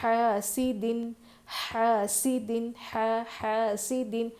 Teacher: حاسد، حاسد، حاسد، حا الف زبر ہا، ہا کی آواز حلق سے، سین میں سیٹی کی آواز، دال پر 2 زیر ہے نا.